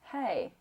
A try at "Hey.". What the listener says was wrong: You see how it's still inside? Hey. It's as if you're almost grabbing here. Hey. Hey. Hey. Now imagine as if there is someone across the street from you and you want to grab their attention. I want you to find that resonance here. Hey.